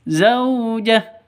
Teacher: Berhubung ini waqaf berhenti di sini, maka hunya berubah menjadi sukun. Begitu. Berubah mati.